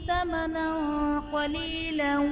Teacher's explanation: ثمنا قلیلا میں نون پر دو زبر کی تنوین، تنوین کے بعد حروف اخفا میں سے قاف ہے تو یہاں پر اخفا کا قاعدہ ہوگا، یعنی تنوین میں ہم غنہ کر کے پڑھیں گے